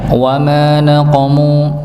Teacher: mimnya dibaca dua harakat dikarenakan ada huruf mad ya, huruf panjang alif di situ bertemu sebelumnya dengan fathah maka pasangannya dibaca dua dua harakat.